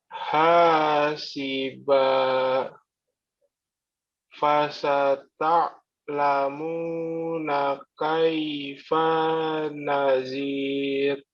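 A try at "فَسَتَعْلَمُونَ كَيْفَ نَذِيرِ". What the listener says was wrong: Ya, hati-hati fa-nya pendek ya. Kaifa nadir ya, seperti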